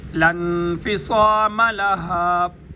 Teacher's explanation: صاد موٹا بھی ہو اور سیٹی کی آواز بھی آئے